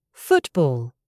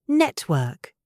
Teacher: In words like football or network, we don't pronounce the T with the tongue. We stop the air in the throat.